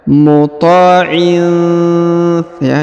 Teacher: Kemudian huruf tanwin in pada huruf in bertemu dengan huruf tha, maka didengungkan dan disamarkan.